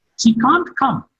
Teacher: Come is marked with a falling tone